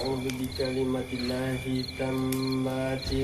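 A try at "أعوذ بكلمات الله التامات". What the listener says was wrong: Enggak. Tammati. Ulang. A'udzu bikalimatillahi, ta'nya panjang. Tammati.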